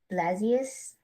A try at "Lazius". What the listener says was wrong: Lazio. It is silent.